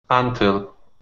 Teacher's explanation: the stress is at the end